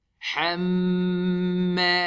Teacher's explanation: We stretch it harakatain. We do the ghunna on the mim mushaddad. Hamma. Ha is thin, mim is thin, we smile.